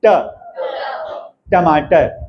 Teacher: ट जब आप बोल रहे हैं तो तालू में टच हो रही है, टंग हमारी कर्व होकर तालू में टच हो